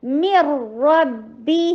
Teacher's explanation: نون completely drop, نہ غنہ باقی رہا، نہ اس کی پروناؤنسیشن باقی رہی، کچھ بھی نہیں رہا.